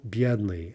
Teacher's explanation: Бедный, adjective, stress on the first syllable.